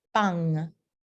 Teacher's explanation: final del enunciado la tienda de friends se vuelve de lar entonces cambia el punto de articulación de alveolar a velar